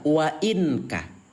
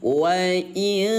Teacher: cara membaca ikhfa yaitu dengan cara disamarkan selama 2 ketukan